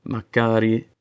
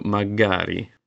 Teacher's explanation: The Greek K between vowels often becomes a softer G sound in romance adaptation.